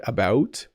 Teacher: When I say about it has kind of a rounded O sound, about. It's almost two syllables, but we do say it quickly like he was out and about.